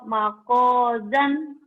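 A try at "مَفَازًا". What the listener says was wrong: Makojan. Mana makojan? Itu titiknya satu. Fa. Mafazan.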